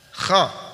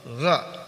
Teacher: Huruf gha dikeluarkan dari pangkal tenggorokan seperti kita mengeluarkan huruf kha, tapi nafas tidak dialirkan ketika huruf ghain diucapkan. Perhatikan ini ya, tenggorokan bagian atas.